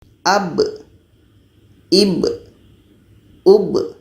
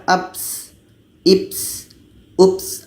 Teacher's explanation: Ketika ba mati menjadi qalqalah. Jadi tidak ada angin di sini. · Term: kolkolah